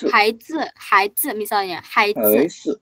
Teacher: Huruf Z itu dibacanya ujung lidah ditaruh ke gigi seri paling bawah.